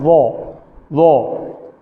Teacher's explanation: دوسرا، اس کو ادا کرتے ہوئے منہ کو گول نہیں کرنا، ضا نہیں کہنا بلکہ ضا ضا ضا. زبان کی نوک دانتوں کی نوک سے ٹچ ہوتی ہے لیکن منہ گول نہیں ہوتا، ضا نہیں کہنا، ضا ضا.